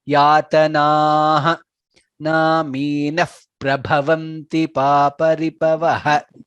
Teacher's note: The visarga should be heard very clearly.